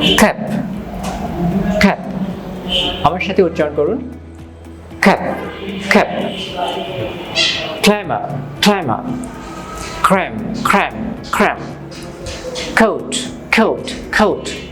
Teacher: The back of your tongue will go up and you're going to push out some air. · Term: K sound